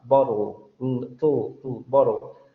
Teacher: ese sonido final que es una L y que además en inglés se le llama L oscura, funciona como una semivocal, porque está funcionando como un núcleo silábico de esa sílaba.